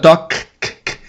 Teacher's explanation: esse K não emite voz